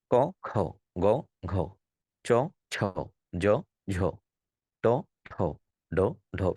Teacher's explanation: যেটা হাতে পান এটা মহাপ্রাণ এটা জোরে বের হই